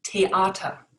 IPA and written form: teˈaːtɐ (theater)